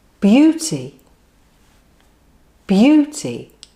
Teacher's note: the stress is always on the first syllable on all forms of the word